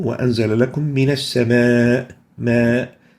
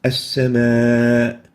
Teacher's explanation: we're going to extend the alif due to the presence of hamza after it. And since they are both in the same word, we name this as an attached mad because both the hamza and the vowel are attached within a single word.